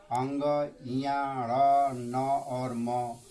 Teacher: अंग इया ड़ न और म, इसका उच्चारण स्थान होता है नासिका से। इसका उच्चारण हम नासिका से करते हैं।